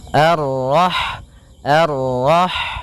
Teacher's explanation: sifat ha itu yang paling mencolok adalah sifat hamnya yaitu mengalirnya nafas ketika kita membacanya. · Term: sifat hamesnya